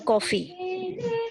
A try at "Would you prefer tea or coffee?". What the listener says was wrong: कॉफी में flat हो गया फिर से।